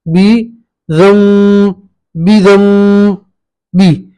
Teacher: तजवीद इक़लाब किस तरह करेंगे, बी दम बी हिम, यहाँ पे भी नून साकिन है, उसके बाद बा है, ठीक है। तो नून साकिन को मीम से बदलेंगे दम, दम, ठीक है। इक्फा के साथ गुन्ना करेंगे